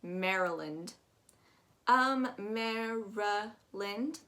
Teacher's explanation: that Y is actually going to take on a U sound, UH sound. Maryland, and that LAN is actually going to sound more like an LIN.